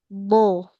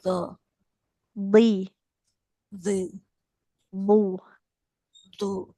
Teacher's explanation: Do jangan do eh ujung lidahnya jangan ditempelkan ke ujung gigi seri. D do ujung lidahnya tempelkan ke gusi